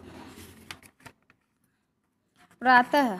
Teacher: विसर्ग का उच्चारण कंठ से हल्के ह के समान होता है।